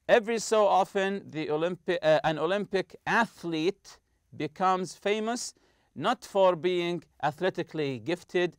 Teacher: the th is the th sound without any vibration